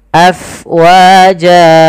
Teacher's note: Kemudian pada lafal fa, alirkan nafasnya, karena fa itu harus ada angin yang kita keluarkan karena dia sifatnya hams, mengalirnya nafas.